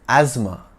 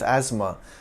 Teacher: the S is pronounced as Zed and the th is silent